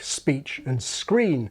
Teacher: the /s/ causes the following sounds to be pronounced as in beach and green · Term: lack of aspiration